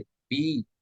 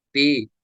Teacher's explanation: हुरूफ मद्दा को एक अलिफ यानी दो हरकत के बराबर खींच रहे हैं। मिसाल, एक चीज मैं आपको यहाँ पे नोट कर दूं।